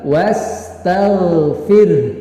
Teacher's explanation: fir-nya itu dibaca tipis karena fa-nya berbaris kasrah